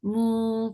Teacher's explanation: Mu for the mouth circle lips make it 2 counts long.